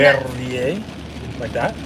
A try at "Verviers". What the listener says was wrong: I don't think they roll their R's. I think it's more of like a guttural thing. Like Verviers.